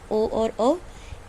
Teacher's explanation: इसको कंठ और ओष्ठ दोनों की सहायता से बोलते हैं हम, ओ और औ। इसलिए इन वर्णों का नाम दिया गया कंठोष्ठ्य।